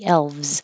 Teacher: l and a V and a z next to each other elves make a V and then go to the Z